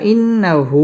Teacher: এখানে গুন্নাহ করে পড়তে হবে